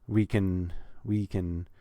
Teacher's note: I'm not stressing the words we or can we can we can I'm making we just long enough to